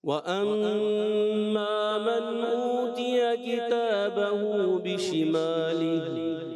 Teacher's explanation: मीम मुशद्दद एक अलिफ का गुन्ना करना है, थोड़ा सा कमजोर हो जाता है।